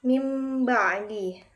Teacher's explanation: cara membacanya nun sukunnya dirubah menjadi huruf mim dan berdengung selama 2 harokat serta menyamarkan mim tersebut. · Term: iqlab